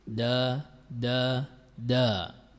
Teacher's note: makhroj huruf Dal terletak pada pertemuan antara ujung lidah dengan pangkal gigi seri atas